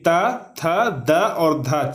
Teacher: उसके बाद दांत से हम लोग कौन कौन से वर्ण को बोलते हैं, तो त वर्ग कहने का मतलब कि त, थ, द और ध 4 होता है, आप लोग ध्यान रखिएगा। तो त वर्ग में जितने सारे भी वर्ण आते हैं उसका भी उच्चारण स्थान दांत से होता है।